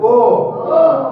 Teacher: अब देखो दांत और ओष्ठ से ओ बोला जाता है।